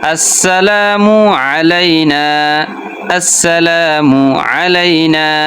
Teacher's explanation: আইন গলার মধ্যে থেকে উচ্চারণ করতে হবে